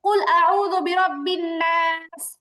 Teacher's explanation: এমনই ভাবে কুল আউযু বিরাব্বিন নাস, নুন আলিফ জবর না, এই আলিফটা হচ্ছে এখানে মাদের হরফ, আর মাদের হরফের পরে কি আছে, একটা সিন আছে, মাদের হরফের পরের হরফে ওয়াকফ করার কারণে কি হচ্ছে, 3 আলিফ টান হচ্ছে